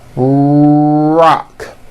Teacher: notice how my lips are coming forward and my tongue moves back in my mouth, and I push out the R sound. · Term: American R sound